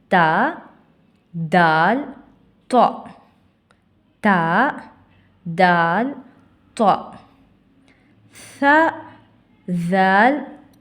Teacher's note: தா நாவின் நுனி மேல் வரிசை நடுப்பற்களின் ஈரை தொடும் பொழுது ஒளிக்க பெறுகின்றன